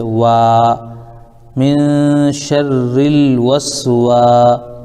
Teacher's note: الف سے پہلے سین کے اوپر زبر ہونے کی وجہ سے یہ الف مدہ ہو جائے گا